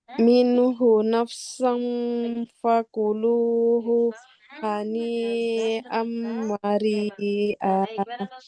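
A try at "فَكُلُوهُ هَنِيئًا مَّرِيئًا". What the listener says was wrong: Jangan dijeda di fakuluhu ya, tidak fakuluhu haniam. Kan jeda ya jadinya. Fakuluhu haniam maria.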